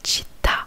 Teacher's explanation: on appuie sur le A, sur la dernière syllabe, sur le A, et ça s'appelle l'accent tonique. · On n'appuie pas sur le chi, on appuie bien sur le A.